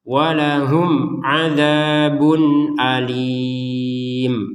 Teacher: Nah, mim mati bertemu ain baru dijelaskan.